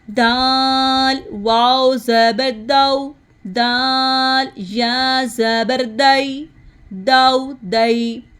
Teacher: دال میں زبان کی نوک اوپر دانتوں کی جڑ کے ساتھ لگتی ہیں